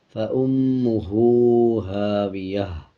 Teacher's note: میم کے اوپر شد ہے، غنہ کیا جائے گا اور غنے کی آواز کو ناک سے نکالا جائے گا۔ اسی طرح ہا کے اوپر الٹا پیش ہے، الٹا پیش کا مطلب ہے جب کسی الفاظ کے اوپر الٹا پیش آ جائے تو اس الفاظ کو 1 سیکنڈ لمبا کر کے پڑھا جائے گا۔